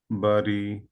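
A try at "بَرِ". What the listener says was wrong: রিতে স্লাইটলি একটু টান হয়ে গেছে, হ্যাঁ, বাড়ি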